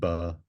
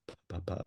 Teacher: B and P and M are just lips together so B has vibration